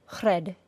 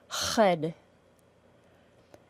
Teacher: The important feature of creating an R sound is that the very back of our tongue, actually down in our throat, is constricted. In the general American accent, the R sound is also a smooth sound that we can make continually without stopping. The continuous quality of the sound is very important.